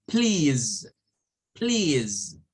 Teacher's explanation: Miren, sonido de vibrante para la S.